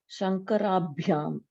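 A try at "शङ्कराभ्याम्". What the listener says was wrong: Yes, good.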